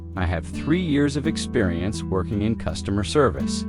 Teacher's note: Emphasize 3 years and customer service.